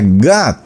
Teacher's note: en inglés ellos hacen otra sílaba un poco mezclada entre la a y la o, que no es ni a ni es ni o y se pronuncia got.